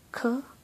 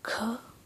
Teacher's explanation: you would feel a puff of air exiting your mouth